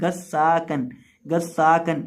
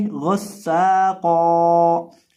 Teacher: आमतौर पे लोग इसको पढ़ देते हैं गस्साकन, गस्साकन, यानी गौन को और कौफ को बारीक पढ़ देते हैं। तो गौन को और कौफ को मोटा करके पढ़ेंगे, सीन में सीटी के बाद पैदा करेंगे और इसको एक अलिफ के बराबर लंबा करेंगे और वक़फ़ की सूरत में इसको पढ़ेंगे गस्साक़ो।